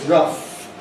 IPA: rʌf